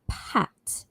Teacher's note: the p sound is produced with two lips meeting each other. And when you say p, as in the word pat, only air comes out. So we call that sound as a voiceless sound.